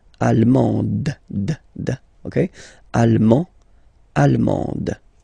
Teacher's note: you don't pronounce the final D, but then you pronounce it here for the feminine form.